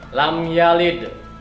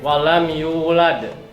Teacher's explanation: Itu namanya qalqalah kubro, mantulnya harus besar.